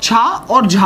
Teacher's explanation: चा वर्ग जो होता है वो तालव्य होता है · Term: तालव्य महाप्राण